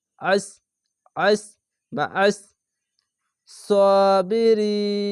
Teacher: মোটা করে গলা চিপে পড়বেন